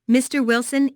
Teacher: Notice the rising intonation on Mr. Wilson, which is you said to address someone.